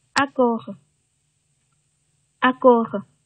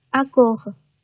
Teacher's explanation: 清辅音▁k▁位于元音▁o，▁这是一个大口的▁o▁之前啊，咱们也送气要稍微少一点啊